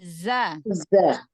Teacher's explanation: Tambahkan sofir pada zainya